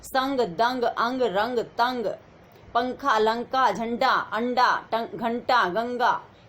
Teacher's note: अनुस्वार की जो साउंड है बेटे वो नाक से निकलती है।